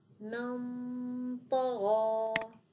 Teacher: الطاء مفخمه اذا صوت الغنه الان سيكون مفخم بسبب الطاء